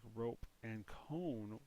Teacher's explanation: long vowels when they are long, like rope and cone, will say the vowel's name O. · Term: long O